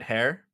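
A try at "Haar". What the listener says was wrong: Little bitch. Har. Not hair. Har.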